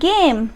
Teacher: आवाज़ गले में से आई, ग की आई